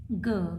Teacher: ऑरल है, वॉइस्ड है क्योंकि वाइब्रेशन होता है, वेलर है और प्लॉजिव हो जाएगी क्योंकि सडन रिलीज किया जाता है